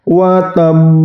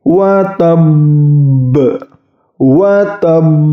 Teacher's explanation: Yang selanjutnya itu qalqalah akbar, yaitu qalqalah bertasydid, ditahan kemudian dipantulkan